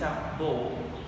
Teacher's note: The consonant ba. According to the place of articulation is bilabial and according to the manner of articulation is stop. According to the voice of articulation is voice.